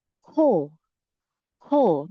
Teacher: Medyo may hangin, medyo malambing. Dahil it is an aspirated consonant.